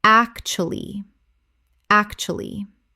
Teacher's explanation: Three syllables in natural speech. The middle U almost vanishes.